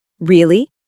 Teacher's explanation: when you ask a question like really, your voice goes up slightly at the end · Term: rising tone